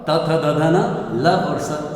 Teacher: दांतों में जिह्वा लगा करके इनका उच्चारण होता है, इसलिए इनको दंत्य कहते हैं।